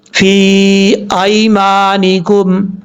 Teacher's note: ایک الف، 2.5 الف کے برابر یا 3 الف کے برابر آپ اس کو لمبا کریں گے، کیونکہ یا کے اوپر جو مد ہے یہ مد منفصل ہے، اور مد منفصل کی مقدار 2.5 سے 3 الف کے برابر لمبا کرنا ہوتی ہے. حمزہ کے بعد یا لین ہے، اس کو لمبا کرنے کی ضرورت نہیں پڑے گی.